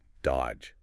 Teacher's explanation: You don't say that middle D at all. It's just dodge. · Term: Completely silent